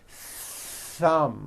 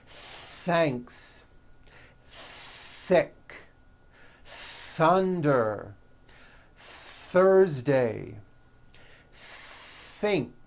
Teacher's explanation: you must stretch out the th sound and hear the air friction